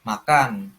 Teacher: Jadi tekanan di satu suku kata yaitu kan